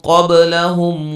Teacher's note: با پہ قلقلہ کریں گے